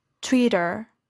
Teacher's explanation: This is a case of rhoticity, that is the pronunciation of the post-alveolar approximant following a vowel in the same syllable, in this case, the central vowel schwa.